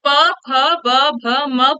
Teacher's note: प, फ, ब, भ, म बोलेंगे जब, तो आपको खुद पता चलेगा कि आपके जो दोनों होंठ है वो एक दूसरे को टच कर रहे हैं, है ना? तो इसका जो उच्चारण स्थान है वो क्या है? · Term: प वर्ग